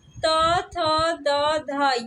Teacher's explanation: ये ता वर्ग की ध्वनियां है, और ता वर्ग जो है दंत से उच्चारित होता है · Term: दंत ध्वनियां